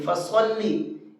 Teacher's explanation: یہاں صاد کو منہ بھر کے پڑھیں گے